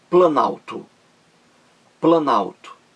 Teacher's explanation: Veja, plano mais alto. Você vê facilmente que caiu o O da palavra plano. Caiu o O e ficou planalto. Então, houve perda desse fonema aí. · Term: perda de fonema